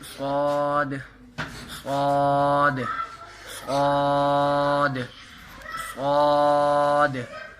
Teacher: یہ ادا ہوتے ہیں زبان کی نوک اور دونوں دانتوں کے اندرونی کنارے سے، یعنی کہ درمیان والے دو دانت ہیں اس کو ہم نے زبان کی نوک کو اس کے ساتھ اٹیچ کرنا ہے، تو اس وہاں سے ادا ہوں گے. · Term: حروف صفیریہ